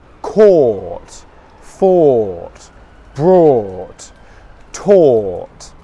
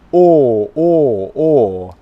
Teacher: The sound comes from the back of my mouth, or. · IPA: ɔː